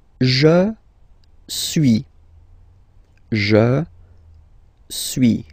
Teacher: as you've been noticing, you don't pronounce the final S